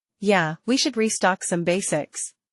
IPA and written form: jæ, wi ʃʊd riˈstɑːk sʌm ˈbeɪsɪks (Yeah, we should restock some basics)